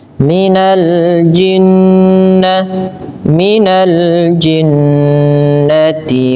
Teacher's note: Dalam hukum tajwidnya dikenal dengan istilah ghunah, yaitu membaca dengan memasukkan suara kepada rongga hidung sehingga dia sambil ditahan dua harakat.